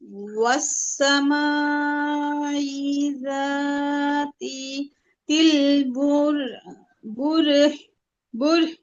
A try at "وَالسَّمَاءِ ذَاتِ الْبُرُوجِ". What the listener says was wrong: রুহ কেন হবে আপু? জিম না। والسماء ذات البروج।